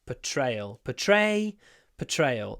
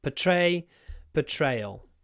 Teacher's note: The first R it's not pronounced